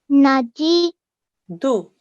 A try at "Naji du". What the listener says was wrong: Naji, du. Okay, let's pay attention to the timing, yeah? Everything should be exactly the same timings.